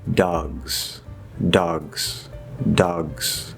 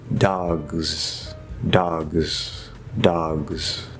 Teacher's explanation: It's a little bit weird. What if we keep just a little bit of that Z, right? Just a little bit, and then move into the S. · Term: partial devoicing